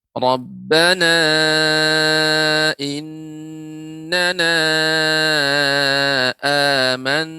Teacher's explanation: Di sini ada hamzah bertemu dengan alif. Yang alif itu merupakan huruf mad. Jadi panjangnya 2 harokat saja. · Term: mad badal